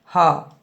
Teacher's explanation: गले के अंदर स्वर यंत्र के मुख से उच्चारित होने वाला वर्ण है ह, जो कि गले के अंदर के मुख से उच्चारित होता है।